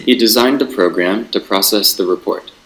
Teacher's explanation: the speaker who pronounces his sentence, has a kind of stop, a small pause after pro